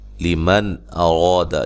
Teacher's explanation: نون ساکن کا اظہار ہے، غنہ نہیں کریں گے ، را کو موٹا ادا کریں گے اور الف مدہ ہے،